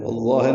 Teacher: والظاہر میں تشدید آئی ہے، ادغام شمسی ہو رہا ہے